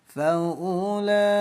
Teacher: Hukum mad wajib dibaca panjang 5 ketukan.